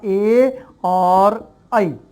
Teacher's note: ये एक होता है कंठ से, और कंठ के साथ साथ जुड़ जाता है तालु, यानी कंठ और तालु दो वर्णों के योग से, दो जगह, दो स्थान, ये दो वर्ण दो स्थानों से होते हैं, कंठ और तालु, इसलिए हम इनका नाम रखते हैं कंठ तालव्य।